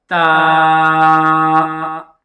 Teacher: زبان کی جو نوک ہے، اسے ہم یہ سامنے کے جو چوڑے سے اوپر والے دانت ہیں ان کی جڑ پر لگائیں گے